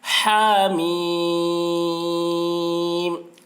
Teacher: ہا میں کھڑا زبر ہے، ایک الف کے برابر کھینچیں گے. میم میں مد لازم حرفی مخفف ہو رہا ہے تو اس میں بھی طول بہتر ہے.